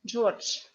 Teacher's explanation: zh in the end of the word we pronounce like sh. And this d also we pronounce like t, George.